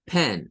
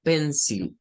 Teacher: Pen es la sílaba tónica, es con el sonido E.